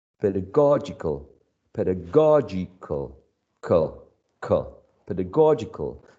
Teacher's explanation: having the stress on the third syllable